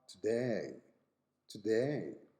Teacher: In Australian English, you say today, today, today, putting an extra sound at the beginning of the diphthong.